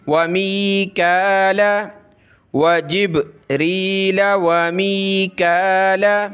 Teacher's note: ये काफ पे खड़ा ज़बर है, एक अलिफ की लिमिट में इसको खींचेंगे